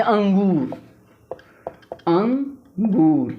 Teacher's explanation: अनुस्वार का उच्चारण करते समय ध्वनि नाक से निकलती है